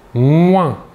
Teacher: Nous sentons l'air passer sur notre doigt si l'on positionne le doigt sous le nez.